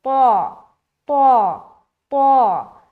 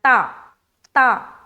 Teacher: تو طا کو ہم موٹے طریقے سے نکالتے ہیں، منہ کو گول کر کے نکالتے ہیں، ٹھیک ہے، اور تا میں بالکل باریک سمپل نکالنا ہے